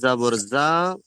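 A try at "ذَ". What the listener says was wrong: যা নয়, জাল। ওটি জাল। জাল জাবার নয়, ভালো করে বলেন দেখেন। খাড়া জাবার, খাড়া যুক্ত করেন। খাড়া, খয়াকারে খা, রয়াকারে রা, খাড়া যুক্ত করেন। জাল খাড়া যাবার যা,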